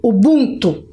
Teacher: pronunciei errado, porque a sílaba tônica é bum